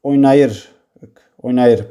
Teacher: Vurğu üçüncü hecanın üzərindədir.